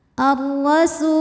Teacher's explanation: rnya dibunyikan secara tafkhim karena ro berbaris fathah maka ro dibunyikan dengan tebal